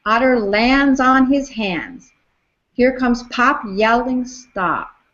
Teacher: there's an unstressed beat missing between lands and on, and between pop and yell.